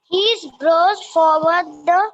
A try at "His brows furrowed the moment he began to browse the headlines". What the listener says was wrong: No, it's not forward, it's furrowed.